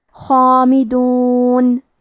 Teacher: مد الف کو بھی بھاری آواز میں ادا کرنا ہے